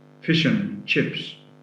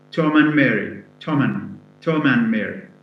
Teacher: and is reduced to one sound, which is n sound. It loses the a sound and it loses the d sound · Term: weak